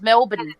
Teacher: there's almost no vowels between the B and the N